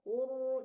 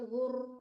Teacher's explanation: jangan banyak getaran rohnya ya Bu, ditebalkan rohnya jadi nggak banyak getaran. Huru, jangan hur, jangan bergetar banyak ya baca rohnya.